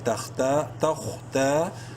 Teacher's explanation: خوا کو bold letters میں سے ہے، تا الف زبر تا، اور تا کو ایک برابر لمبا کریں گے الف مدہ کی وجہ سے